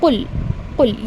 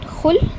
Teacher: Whenever you read qaf, remember there is a bouncing sound. But whenever you are reading kha, you are getting the vibration sound.